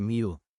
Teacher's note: con la aproximante palatal j funcionando como elemento de transición entre la nasal inicial y la semivocal labial final